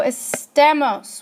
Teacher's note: to mark it but let's look at a stos so estos where do you hear the stress it's on the second to last